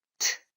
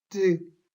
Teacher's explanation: 여기 성대의 진동이 없이 그냥 터져 나오니까 트 이렇게 발음이 되고 성대가 진동하여 드 성대가 진동할 뿐 두 소리가 나는 위치나 방법이 똑같습니다.